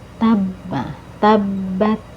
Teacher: ada tasdid ya jadi harus ada ee penekanan ya di huruf ba